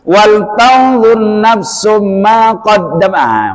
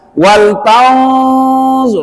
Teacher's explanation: Karena nun mati bertemu dengan zo itu harus didengungkan. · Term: ikhfa hakiki